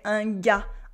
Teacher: We don't say the R and the S at the end